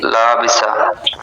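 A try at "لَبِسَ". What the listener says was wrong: লাবিসা টান হবে না তো, লাবিসা।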